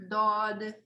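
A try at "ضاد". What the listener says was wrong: Good. Try to make it a bit heavier. Dod. So the way you say this letter, okay, you take your tongue, the side of your tongue, and you like put it up where your molar is to the side.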